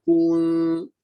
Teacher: sepatutnya ku saja yang muncung. Nun jangan dimuncung sebab nun berada dalam status sakin. Ya, nun itu berada di status sakin, iaitu keadaannya itu diam.